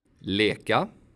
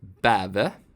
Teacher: The long vowels E and Ä sound quite similar. The E sound is something in between I and Ä.